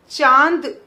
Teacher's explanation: अब जब हम बोल रहे हैं चांद, तो च के साथ ही ये नासिक की ध्वनि निकल रही है, तो हम यहां चंद्र बिंदु लगाएंगे, च के ऊपर चंद्र बिंदु लगाएंगे। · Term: अनुनासिक